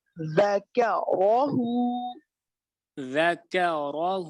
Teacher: یہاں پہ لفظ جو حرف را ہے اس سے موٹا کریں گے چونکہ اس کے اوپر زبر ہے